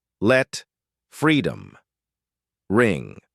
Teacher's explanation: strong at the start soft at the end. It carries power but finishes gently.